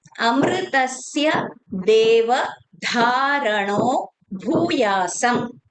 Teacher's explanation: So here dharano, dha is Mahapran and bhuyasam, bhu is again Mahapran.